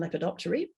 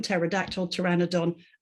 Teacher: But in lepidoptery, to do with butterflies, remember, feather, wing, we hear it again. So in helicopter and lepidoptery, we hear the p, but not in pterodactyl, pteranodon, and so on.